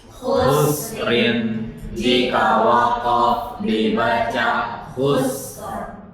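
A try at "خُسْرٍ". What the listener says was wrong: Enggak khussar. Ada rohnya. Itu lagi khusrin.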